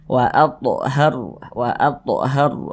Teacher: sokon karena disokonkan sebelumnya ada huruf yang memiliki tanda baca fathah maka huruf rnya kita tebalkan sehingga pangkal lisan kita itu naik terangkat ke atas ketika Kita mengucapkannya · maka huruf rnya itu dibaca tafkhim dibaca tebal